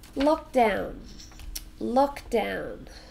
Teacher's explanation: so two syllables oh we stress the first one